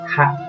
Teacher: Nah ini haknya ini ringan ya. Hak keluarnya dari ujung kerongkongan, hak ya.